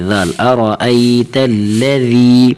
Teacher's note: أرأيت لام زبر تل، لام زبر له، أرأيت ذال یا زر ذی، أرأيت الذی، الذی یہاں حرف ذال کو بریک پڑھیں گے، ٹھیک ہے نا، سخت نہیں پڑھیں گے، زا نہیں پڑھیں گے، بلکہ یہ ذال ہی پڑھیں گے، ذال، أرأيت الذی، نرمی کے ساتھ۔